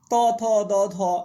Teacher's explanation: জীবাগ্র অর্থাৎ জীবের অগ্রভাগ দন্তকে স্পর্শ করে ত থ দ ধ এগুলো সব কিন্তু আমরা বলব দন্ত ব্যঞ্জন